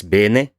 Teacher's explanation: An example word for this is bene, where the first syllable is stressed, has the lower A, and the second syllable is unstressed and has the higher A